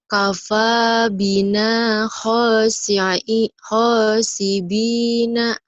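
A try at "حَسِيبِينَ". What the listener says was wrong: Tidak ada titiknya, sayang. Kafa bina hasibina.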